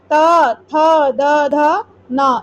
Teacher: इसमें हमारा क्या लग रहा है? जीभ दंत से लग रही है। तो ये हमारे हो जाएंगे दंत।